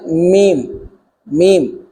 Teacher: میم دونوں ہونٹوں کے خشک حصے سے، میم یہ بہر والا حصہ خشک ہوتا ہے، یہاں سے میم میم، با تر حصے سے اور میم خشک حصے سے۔